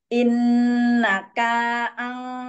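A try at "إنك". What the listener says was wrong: Jangan innaka, tapi lanjut panjang seperti kereta. Jadi gini, jangan dilihat perkatanya. Pokoknya kita lihat itu ada tanda buat menekan, buat menahan, misalnya ikhfa atau matnya.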